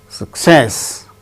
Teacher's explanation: success with stress on second syllable